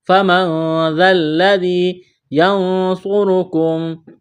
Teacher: نون ساکن کے بعد صاد ہے، اخفا کریں گے، صاد اور را کو موٹا کرنا ہے